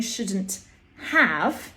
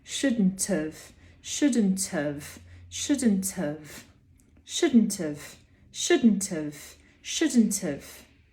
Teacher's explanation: It sounds like shouldn't of, but it's not shouldn't of. We're saying shouldn't have, but we pronounce the have as of.